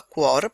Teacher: Quindi sembrano due vocali, in realtà non lo sono. Questa è un'unica sillaba, cuor, perché la U semivocale fa suono con la Q, con la gutturale precedente.